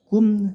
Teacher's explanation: mim sukun bertemu Sin ini namanya izhar syafawi tidak boleh dibaca dengung tapi singkat saja jelas · Baknya kolkola sugro, bak sukun dibendalkan, dipantulkan sabe. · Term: idhar syafawi